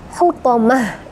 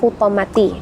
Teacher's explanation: Tamarbutah yang berada di akhir ayat atau wakaf itu akan berubah menjadi ha